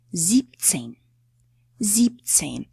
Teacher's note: The next one is sieben. We drop the en and say siebzehn.